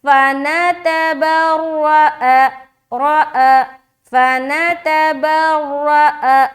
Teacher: सब में जबर है, सिर्फ रा को मोटा रखना है